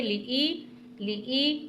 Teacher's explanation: یائی مدہ کو تھوڑا سا کھینچ کر پڑھتے ہیں، یعنی لی ای، لام کو نہیں کھینچیں گے، لام زیر لی، حمزہ یا زیر ای۔ زیر کو جلدی پڑھنا ہے، ای کو آپ تھوڑا سا کھینچیں گے